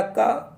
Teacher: तो KTM जो पहला का के आ रहा है ये के से कंठ हुआ है, का उच्चारण स्थान कंठ से ही होगा